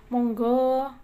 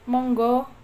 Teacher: di Jawa Tengah lebih bernada, lebih lembut dan bernada, sedangkan di wilayah Jawa Timuran seperti Surabaya, Malang lebih tegas